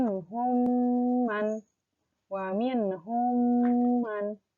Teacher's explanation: suaranya di masukkan ke rongga hidung